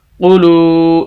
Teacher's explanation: ایسی واو ساکن جس کے پچھلے لفظ کے اوپر پیش، لام کو لمبا کریں گے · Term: واو مدہ